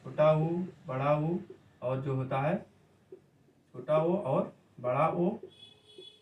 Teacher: पश्च स्वर का डिफिनेशन वही है, ऐसा स्वर जिसका उच्चारण के लिए जीभ का पीछे का भाग जो है कार्यरत हो, उसे पश्च स्वर कहा जाता है।